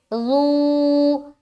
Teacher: सीटी की आवाज नहीं आएगी, नरमी के साथ अदा करेंगे और खींचेंगे ज़ू।